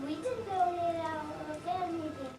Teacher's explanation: there is an instance of stopping, changing the voiceless fricative th into a voiceless t